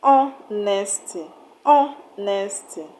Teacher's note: For example, the word honesty has a stress on O, H-O, O. In pronouncing the O in honesty, you will see that more time is being spent on that syllable, the O syllable, and it is louder than the rest of the syllables.